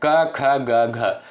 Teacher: क, ख, ग, घ इनका उच्चारण किससे होता है? कंठ से होता है।